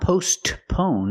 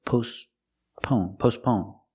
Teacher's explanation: Your tongue goes up a little bit and makes a stop T, but you don't really hear it.